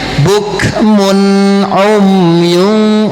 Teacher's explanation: Tanwin menghadapi ain, izhar. Jangan gunahin bukmun umyun.